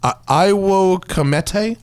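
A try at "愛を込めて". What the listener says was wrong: You don't pronounce the W. Io Comete.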